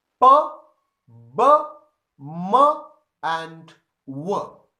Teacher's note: So the sounds which are produced with the help of the two lips are called bilabial sounds.